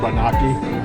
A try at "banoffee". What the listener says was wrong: No, no key. Banoffee. Banana toffee. Banoffee.